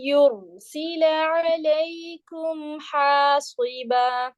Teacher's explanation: हासिबा मोटा नहीं पढ़ेंगे हम, यहाँ पे हैवी नहीं करेंगे बा और हा को